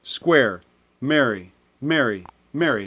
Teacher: within square we also end up with three variations of mary mary mary right i say them all the same